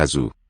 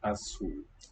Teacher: the Z is a voiced one here, not the Spanish sa, but as a cabeça.